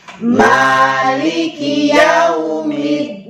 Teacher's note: Yau di sini adalah lin. Ada waw disukun Yau. berarti mencucu.